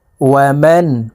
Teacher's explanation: এখানে নুন সাকিনের পরে ইজহারের হরফ হামজা আসছে, এই কারণে এই নুন সাকিনকে গুন্নাহ ছাড়া স্পষ্ট করিয়া পড়তে হবে।